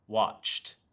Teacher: In this case, the E D simply becomes a T sound, watched. Other examples include stopped, laughed, worked past.